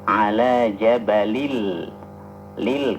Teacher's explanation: ala tanwin ketemu dengan lam apa hukumnya idgham bila gunna